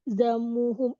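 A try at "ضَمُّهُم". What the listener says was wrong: dhammuhum. dhammuhum Pakai tasdid. Dhammu pakai tasdid.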